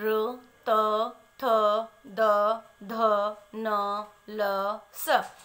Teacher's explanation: अब आगे देखिए दांतों से उच्चारित वर्ण कौन कौन से होते हैं, र, त, थ, द, ध, न, ल, स। इनका उच्चारण स्थान दंत होता है